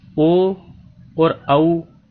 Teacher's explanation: ओ और औ स्वर कंठ और ओष्ठ की सहायता से बोले जाते हैं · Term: कंठोष्ठम